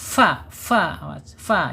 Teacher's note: Lam sudah, makhraj ada di alisan, fa sudah ada di asyafatain, 2 bibir, Hanya saja kaidahnya fa ini ujung gigi seri atas menyentuh perut bibir bagian bawah ya.